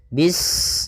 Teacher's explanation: Bismillahirrahmanirrahim pada bacaan bis ini sempurnakan huruf sinnya ketika sinnya sukun ini ada sifat safir dia harus kita alirkan nafasnya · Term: sifat shafir